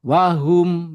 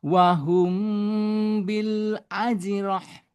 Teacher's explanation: cara membacanya harus disertai dengan gunah ya selama 2 harokat dengan kadar bobot sentuhan di jalur al-khaism yang ringan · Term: Iqfa Syafawi